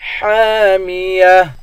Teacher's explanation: گولتا پر جب وقف کرتے ہیں گولتا ہا بن جاتی ہے